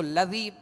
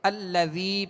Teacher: دیا تو اب یہ یہاں پہ حمزہ لکھا ہوا ہے اور یہ حمزہ کو زبر دے کر اس کی زبر کے ساتھ ہم لام کو ملا کر ادا کریں گے ، یعنی الذی پڑھیں گے، اس کو لذی نہیں پڑھیں گے